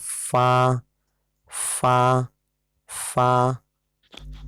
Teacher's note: اوپر کے دانتوں کا کنارہ نیچے کے ہونٹ سے مل کر فا ادا ہوتا ہے، یعنی دانت کا جو اوپر کا حصہ ہے اس کا کنارہ، اوپر والا جو دانت ہے اس کا کنارہ نیچے کے ہونٹ سے ملاؤ تو ادا ہوگا فا فا فا.